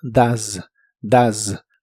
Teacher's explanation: El auxiliar does lo pronuncias como si la O fuese una A. La E no se pronuncia y la S se pronuncia de manera vibrante. Z. Así que suena como does, does.